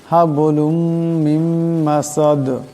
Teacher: মিম মাসাদ, এখানে মিম নুন সাকিন, এরপর মিম আসছে, এখানে মিমের সাথে ইদগাম হয়ে যাবে এবং ইদগামের এক আলিফ পরিমাণ গুণা হবে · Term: ইদগামের গুণা